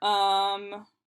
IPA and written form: ʌː (uhhh)